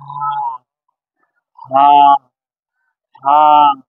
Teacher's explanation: এই হাটা বাতাস বের হবে